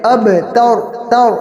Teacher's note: کیونکہ با حروف مقلقل میں سے ہے، اور تور کے اندر تا کو باریک کریں گے اور رو کو پر کریں گے